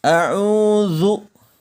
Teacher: huruf da dikalimat isti'adzah dikata a'udzu ini menggunakan titik ya jadi pengucapannya jelas terletak pada ujung lidah serta menempati dengan ujung dua gigi seri atas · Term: huruf dza